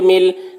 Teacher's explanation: لام کے اوپر تشدید ہے، تشدید والے حرف کو 2 مرتبہ پڑھیں گے، ایک مرتبہ پیچھے والے حرف میم سے ملا کر اور ایک مرتبہ خود اسے